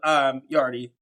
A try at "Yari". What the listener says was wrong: No, you saw the D as in Devon.